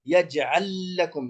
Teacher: يجعل لكم لام واحدة تصبح بالإدغام